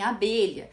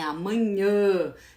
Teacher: ele pode ter um som mais aberto em abelha, mas ele tem um som mais fechado em amanhã · o somzinho sai mais pelo nariz, que ele tem um som mais nasalizado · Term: nasalização